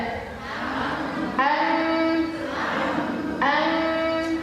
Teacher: bagian bibir tidak ada suara yang keluar suara keluar di bagian kisyum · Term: huruf mim